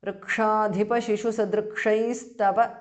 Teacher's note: Visarga changes to S.